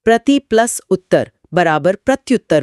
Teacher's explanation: यहां प्रति की छोटी, इ और उत्तर का ऊ मिल रहे हैं। नियम के अनुसार इ तुरंत य में बदला और ऊ के साथ जुड़कर यु बन गया। इसीलिए यह प्रत्युत्तर हो जाता है। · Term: यण संधि